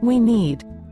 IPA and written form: wi niːd (We need)